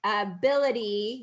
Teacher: the T becomes a D because it's surrounded by vowels